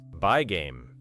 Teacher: A learner may expect two separate G sounds big game. But native speakers often hold one longer G sound rather than clearly producing it twice. By game. The two sounds merge into one connection.